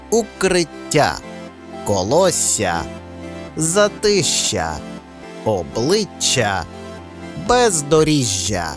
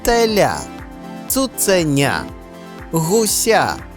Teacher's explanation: подовжені приголосні вимовляються трохи протяжніше ніж зазвичай і на письмі позначаються подвоєнням літер оскільки подвоєнням літер також позначається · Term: подовження приголосних